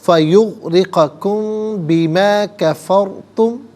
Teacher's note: را ساکن ما قبل فا پر زبر ہے، را ساکن کو پر کر کے پڑھا جائے گا